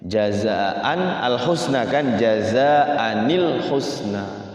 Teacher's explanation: nunnya itu selalu ni ya. Bukan nau tapi ni